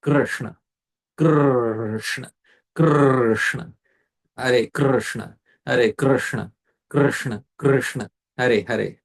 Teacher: This R is a vowel, it's not a consonant in Krishna.